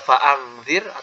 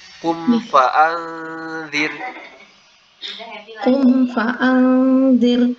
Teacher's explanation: Jadi nunnya benar-benar samar, lalu mempersiapkan lidahnya untuk mengucapkan huruf dzal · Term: ikhfa